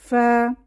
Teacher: কিভাবে উচ্চারিত হয় দুই ঠোঁট গোল করে ওয়াও উচ্চারিত হয় এবং উপরের দাঁত এবং নিচের ঠোঁটে বাতাস চালু হয়ে ফা উচ্চারিত হয় উপরের দাঁত নিচের ঠোঁট ফা এখন আমরা পরবর্তী পৃষ্ঠা 13 নাম্বার